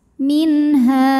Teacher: karena ada nun sukun menghadapi huruf halqi yaitu ha maka nun sukun dibaca jelas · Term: izhar halqi